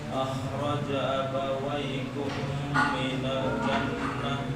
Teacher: Khoknya ditebalkan, kemudian kadar mim dan nunnya sama, gunahnya sama.